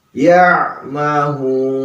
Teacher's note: ha-nya ha besar ya. Sama juga di kerongkongan bagian dalam ha itu. Ya'mahun. Mad arid lisukun.